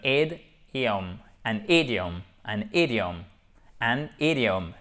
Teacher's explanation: Et le fait de bien prononcer ensemble dans une même syllabe la première voyelle avec la première consonne, ça vous évite de rajouter un H qui n'est pas voulu et qui n'a pas à être présent avant de prononcer le I